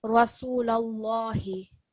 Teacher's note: lam we want to be thicker because this is preceded by the fatha stroke.